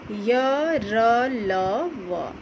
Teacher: इनका उच्चारण करते समय जीभ मुख के किसी भाग को पूरी तरह से स्पर्श नहीं करती है। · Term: अंतस्थ व्यंजन